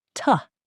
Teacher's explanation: In careful, slow speech, to. But in natural, everyday speech, to becomes just tuh, or even shorter. It almost disappears.